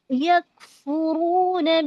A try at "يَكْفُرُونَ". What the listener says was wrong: رونا، کاف میں ہمس لائیے، شدت ہمس.